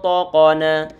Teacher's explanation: Gunnah perlu ditebalkan. Taqana, to dia tebal, qaf tebal juga, na tipis